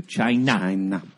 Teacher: there's an emphasis on that last syllable that needs your attention